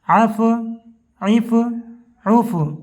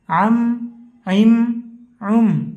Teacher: عین ہے، اس کو بہت زیادہ حلق سے عربی کی طرح نہیں نکالتے ہیں۔ حمزہ کی شکل بھی اگر اسے پڑھ دیں تو یہ چلنے کے قابل ہے اور بلکہ بہتر مانی جاتی ہے، اور اپنے مخرج کے ساتھ عربی کی طرح نکالنا اردو کے اندر معیوب اور عیب سمجھا جاتا ہے۔